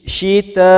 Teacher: empat ketukan untuk mad wajib muttasil